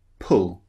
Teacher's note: So the first one, extremely short, as in pull. Notice the shape of the lips, they're quite rounded, not very rounded, but quite rounded.